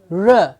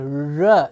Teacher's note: The tongue is curling up to give us r.